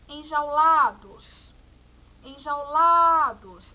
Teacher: A sílaba tônica a gente já dá para perceber que é o lá, né? Enjaulados. A pronúncia demorou mais. E quando a gente fala a sílaba jau, enjaulados, a vogal que mais aparece é o A, porque ó, enjau. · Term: semivogal